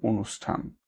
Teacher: এই মূর্ধন্য ষ হওয়াতে এর যে উচ্চারণ স্থানের পরিবর্তন ঘটলো, ওই কারণে যেখানে থ ছিল সেই থ এর পরিবর্তন হয়ে কিন্তু ঠ হয়ে গেল। ঠটা ওই মূর্ধন্য ষ এর মূর্ধার স্থানীয় উচ্চারণ, অর্থাৎ মূর্ধন্য ষ এবং ঠ একই উচ্চারণ স্থানীয় হলো। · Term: সমীকরণ